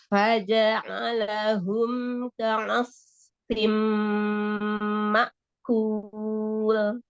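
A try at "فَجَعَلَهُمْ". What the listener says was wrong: Faja'a. Ibu ainnya itu kurang turun. Masih lebih dekat ke hidung. Bukan faja'a. Ja'a. Turun lagi. Ja'a. Ja'a. Turun lagi. A'i'u. A'. Masih ke hidungnya, Masya Allah.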